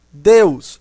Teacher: esse e tem som de e não tem som de i não é Dios é d Então não preciso analisar o resto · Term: vogal